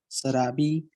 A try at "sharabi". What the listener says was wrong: It's not sarabi. Work on the sh sound.